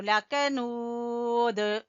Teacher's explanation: یہاں پہ واو مدہ ہے تو لکنود، دال کے اوپر قلقلہ کریں گے، اور وَإِنَّهُ، نون مشدد کا غنہ کریں گے اور ہو کو کھینچیں گے الٹا پیش کی وجہ سے۔